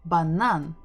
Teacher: we're stressing the final syllable